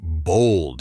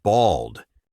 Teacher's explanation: The pronunciation is slightly different, too. Bold has more of an O sound, while bald is a bit flatter with an A sound.